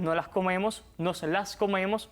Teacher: aspiramos estas S a veces